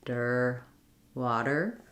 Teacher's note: So I would build this from the so saying and then a light flap, der, water. What I notice when I do that der is that my tongue is lifting much further back against the roof of my mouth.